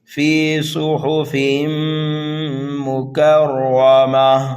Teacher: را کے اوپر زبر ہے اس لیے را کو پر پڑھنا ہے، گول تا کو ہائے ساکنہ سے بدل دیں گے جیسے یہاں پر بدلا تھا ہم نے، اس کو بولیں گے وقف بالابدال۔